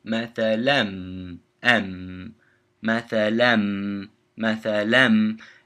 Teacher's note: you change the noon from the tanween, that mathalan, changes to a m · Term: idgham with ghunna